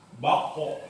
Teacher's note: ketika membaca huruf qaf yang qalqalah, pantulannya tetap harus tebal. Pantulannya harus tetap tebal.